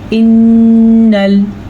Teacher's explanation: नून पेशाद आने की वजह से यहाँ पे गुन्ने की कैफियत पैदा होगी